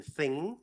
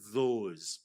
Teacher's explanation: th, a voiceless one as in thing, and then th, a voice one as in those